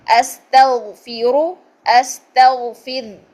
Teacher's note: جب ہم نے استغفر کیا تو را ساکن ہو گئی، اور را ساکن سے پہلے زیر ہے تو ہم اس کو باریک کر دیں گے